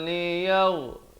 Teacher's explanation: Rain di hujung kerongkong